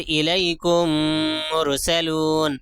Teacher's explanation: یہاں پہ دیکھیے دو میم ساکن کے بعد دوسری میم آ گئی ہے، اس لیے میم کو میم سے ملا کر مدغم کر کے ادغام کر کے غنہ کے ساتھ پڑھیں گے، ناک میں چھپا کر پڑھیں گے